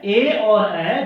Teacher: ये दो वर्ण है ए और ऐ जिनका उच्चारण दो स्थान से होता है, कंठ और तालु से